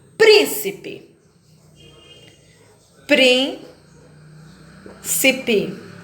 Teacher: todas as palavras proparoxítonas que são aquelas em que a antepenúltima sílaba é a mais forte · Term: sílaba tônica